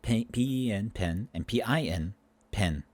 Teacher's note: these two vowels in certain words are joining together they're becoming indistinguishable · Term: merging of vowels